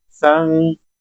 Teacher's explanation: ये जो नाक के अंदर आवाज गई है इसको कहते हैं इख्फा करना